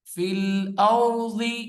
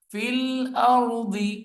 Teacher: را موٹا پڑھا جائے گا، ضاد موٹی پڑھا جائے گا